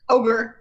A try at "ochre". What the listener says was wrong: There's no K in there. pronounce it as Ocher. His Ocher eyes.